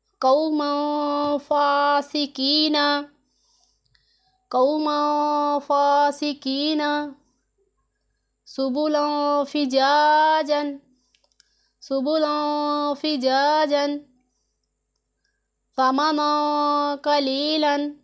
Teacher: ان میں ہم نے غنہ کر کے پڑھنا ہے، ناک میں چھپا کر پڑھنا ہے